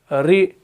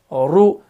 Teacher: हरफ रॉ को अदा करते वक्त जुबान की नोक में हल्की सी कपकपाहट पैदा होनी चाहिए। लेकिन इस बात का ख्याल रखना है कि इतना ज़्यादा तिकरार इसके अंदर नहीं करना है कि ये जो हरफ है ये पूरा बिगड़ जाए, इसकी जीनत ही बिगड़ जाए।